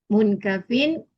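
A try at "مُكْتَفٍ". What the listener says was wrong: Bukan mungkafin, tapi muktafin. Tidak ada nun.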